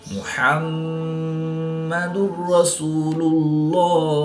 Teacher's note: دو پیش کی تنوین کے بعد را حروف ارملون میں سے ہے، تو یہاں پر ادغام بلا غنہ ہوگا، یعنی کہ بغیر غنہ کے پڑھیں گے. را مشدد پر زبر ہے تو را کو پوڑ پڑھیں گے.